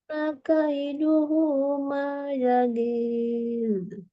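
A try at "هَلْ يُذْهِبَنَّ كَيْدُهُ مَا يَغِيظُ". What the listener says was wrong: Zalnya kurang lembut, nggak nyambung nih, nggak rohwah istilahnya. Hal yuzhibanna ini suaranya harus ngalir terus ya. Ma yaghil. Ri-nya gimana ya tadi? Agak yagi, agak-agak tegas gitu. Jangan, dia harus lembut gitu ya.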